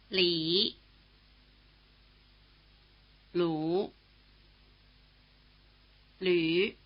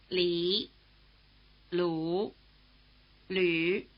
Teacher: the new vowel written U umlaut combines features of the vowels written I and U. It has roughly the tongue position of the vowel sound E and roughly the lip position of the vowel sound U.